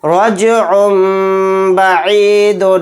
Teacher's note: با آ گیا تو یہاں پر بھی اقلاب کا قاعدہ ہوگا، عین کو میم کے ساتھ ملا کر غنہ اور اخفا کے ساتھ پڑھیں گے